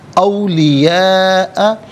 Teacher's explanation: اولیاء میں آپ دیکھیں الف مدہ، اوپر مد کی علامت مد متصل ہے، مد واجب بھی کہتے ہیں، لازم بھی کہتے ہیں. اس کو منیمم 3 سے 4 حرکات کی مقدار کھینچ کر پڑھنا ضروری ہے، اور میکسیمم اس کو 5 سے 6 حرکات کی مقدار کھینچ کر پڑھ سکتے ہیں.